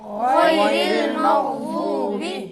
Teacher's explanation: حرف ضاد میں زبان کو سائڈ پہ لگا کر بھاری ادا کرنا ہے